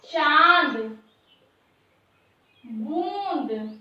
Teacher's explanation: जैसे चांद, बूंद, ये हमारा क्या है, चंद्रबिंदी के आकार में प्रदर्शित किया जाता है और मुख और नासिका दोनों से इसका उच्चारण किया जाता है। इसको हम क्या कहते हैं, अनुनासिक।